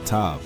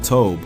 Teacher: in which the Proto-Semitic ah sound became o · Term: Canaanite shift